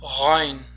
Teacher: Mahraji halqum o'rtasi, ya'ni halqum o'rtasi talaffuz qilinadi. O'zimizning o'zbek tilimizdagi g'i harfi bilan to'la mos tushadi talaffuzi. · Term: g'oyn harfi